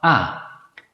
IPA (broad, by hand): a